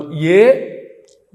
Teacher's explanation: తాలవ్యంతో పలకాలి ఇచ్య య అందుకే తాలువులు పనిచేస్తూ ఉంటాయి. ఏ ఏదైతో కంఠతాలు ఏ అన్నప్పుడు కంఠము తాలువు రెండు కలిపి పనిచేస్తాయి